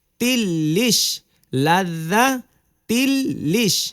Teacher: তাসদিদের কারণে হরফ গুলো দুইবার করে উচ্চারণ হয়েছে